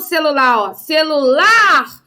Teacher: então lá é a sílaba tônica da palavra celular